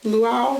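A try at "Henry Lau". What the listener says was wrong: Adding extra syllables in there. Like 3 letters, champ.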